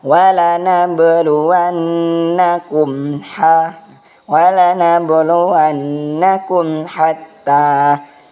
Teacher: maka hukumnya adalah izhar syafawi, itu jelas di bibir.